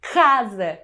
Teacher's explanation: O som inicial de casa é K, casa, que se coarticula com a vogal A e forma a sílaba K.